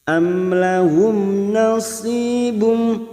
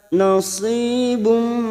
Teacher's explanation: Am lahum nasibum huruf sisu kasrah diikuti sukun 2 harokat. Nasibum di tanwin bertemu mim idgham bi gunnah masuk pada huruf mim dan ditahan selama 3 harokat